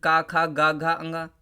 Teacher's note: का वर्ग पूरा कंठ से होगा